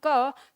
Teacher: क हमारा कंठ से बोला जाता है